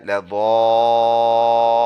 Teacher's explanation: stop کریں گے تو نون کا زبر سائلنٹ لا ضالون بن جائے گا